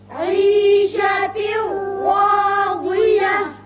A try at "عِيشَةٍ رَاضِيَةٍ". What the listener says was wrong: راضية نہیں ضاد نہیں ضاد عيشة راضية